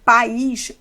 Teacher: o A sempre é vogal, mas o I ficou mais forte que esse A, só colocando esse acento. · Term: hiato